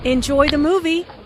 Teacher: Notice how the intonation rises on movie. This is said in a friendly way and is followed by an exclamation point.